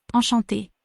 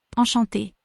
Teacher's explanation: Note the en at the start sounds more like an on, the ch makes a sh sound, and the e with the accent is making an a sound.